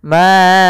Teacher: Maka huruf ma-nya kita panjangkan dulu 4 harokat atau 5 harokat. Ma'auna, tapi jangan terlalu panjang sampai 6 harokat atau 7 harokat dan sebagainya. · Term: mad jaiz munfasil